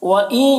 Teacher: بُطُونِ هَٰذِهِ الْأَنْعَامِ خَالِصَةٌ لِذُكُورِنَا وَمُحَرَّمٌ عَلَىٰ أَزْوَاجِنَا، وَإِن یہاں پر نون ساکن کے بعد یا ہے حروف یومین میں سے، تو نون کو یا سے ملا کر غنہ کے ساتھ پڑھیں گے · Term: ادغام ناقص